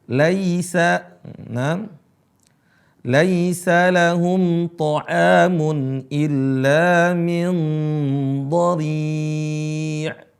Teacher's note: Banyak baca laisa pakai e, laisa yang benar pakai i.